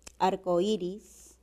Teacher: Arcoíris presenta como un hiato acentual, suena más la vocal cerrada que la vocal abierta O. Entonces predomina la regla del hiato.